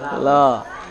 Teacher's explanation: Anak-anak susah bilang ro. Orang Asia Timur susah bilang ro. Orang Mandarin, orang Jepang itu bilangnya jadi lo. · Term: Ro jadi L